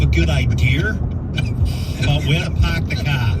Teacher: where there is an R in the word, it's silent, and where there is no R, you put one in